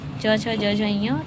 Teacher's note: इसमें च वर्ग को हम स्पर्श संघर्षी भी कहते हैं।